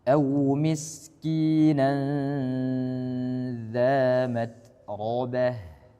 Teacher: Nah, di sini pertama au lin jangan sampai tebal, kemudian miskina sin dialirkan, kemudian nanza di sini ikhfa dan dia ditahan